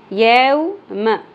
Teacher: यौ यौ नहीं पढ़ना, ये मजहूल गलती है। यौ म मीम की ज़बर छोटी रहेगी। यौ म ज़्यादा नहीं खींचनी।